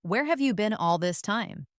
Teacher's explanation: The stress usually falls on where and been.